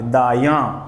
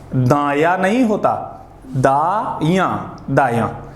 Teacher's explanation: चंद्र बिंदु का जो उच्चारण है वो यज्ञ के बाद करेंगे, ना कि द के बाद।